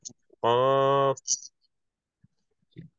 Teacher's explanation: জিহ্বার গোড়া তার বরাবর উপরে তালুর সঙ্গে লাগাইয়া চার নম্বর মাখরাজ উচ্চারিত হয়